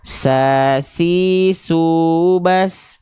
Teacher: dia punya sifat hams tapi kadarnya mengalir si nafasnya